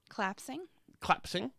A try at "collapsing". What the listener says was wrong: It's three syllables. Because you make it 2 syllables. You rob it of a syllable where you are happy to charitably give February the R audibly. Collapsing does not get the same treatment.